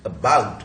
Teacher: बा पे आएगा स्ट्रेस